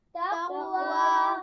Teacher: अमरा, इसमें रा मोटी पढ़ी जाएगी। तक़वा, क़ाफ पर क़लक़ला होगा और उसके बाद वाव है तो वाव के मखरज का ख्याल रखिए, दांतों का इस्तेमाल नहीं करना।